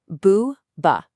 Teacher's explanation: the B in boua is what's called a voiced labial. It's much softer. It resonates.